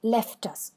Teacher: left is stressed and us is unstressed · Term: troche, trochee